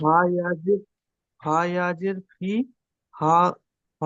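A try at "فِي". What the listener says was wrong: ফি টান দেন, ইয়া মাদ্দা আছে, ফা ইয়া জের ফি, ধরে ধরে পড়েন।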